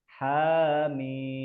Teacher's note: jangan terdengar seperti akhirnya hamzah ya.